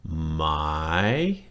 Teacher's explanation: It's got a rising tone on it, right? Goes down a little bit and then comes up.